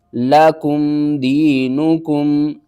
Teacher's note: یا ساکن سے پہلے زیر ہے، حروف مدہ ہے، ایک الف کے برابر آپ نے کھینچ کر پڑھنا ہے